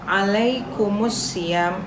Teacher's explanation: Alif lam di sini seperti tidak ada alif lamnya. Jadi masuk langsung ke huruf setelahnya. Kenapa? Karena di sini ada tasydid. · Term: alif lam syamsiyah